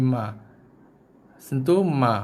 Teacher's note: Bibir atas kita dan juga bibir bawah kita bersentuhan dengan lembut, lepaskan keluarnya bunyi ma.